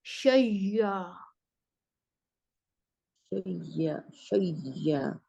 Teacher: یا کا یا میں ادغام کر دینا ہے شیا. شیا شیا یعنی جی اس پہ سٹریس آئے گا سٹریس آ جائے گا یا یا پر سٹریس آ جائے گا.